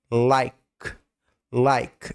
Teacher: esse K do like, ele é fechado. Só um pouquinho do K. · esse K do like, a língua ela não é no céu da boca, mas é como se o meio dela ficasse tenso, próximo do céu da boca. Like, like, é claro, o L, a língua atrás do dente.